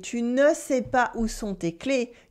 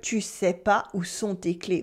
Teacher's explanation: So the ne almost always gets dropped so that we can speak French faster. So that instead of hearing tu ne sais pas où sont tes clés, you would hear tu sais pas où sont tes clés.